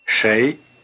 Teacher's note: have you been paying attention to the tone it's the rising tone